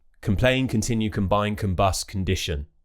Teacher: For example, complain, condition, but I want you to know that we'll only pronounce them with a strong vowel if that syllable is stressed. If it's an unstressed syllable, we'll use the schwa sound on that letter O. So it will be k, that's a schwa sound, relaxed mouth.